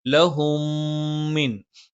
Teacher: സുക്കൂനുള്ള മീമിനുശേഷം മ വന്നു തീർച്ചയായും നിർബന്ധമായും മണിച്ചുരിക്കണം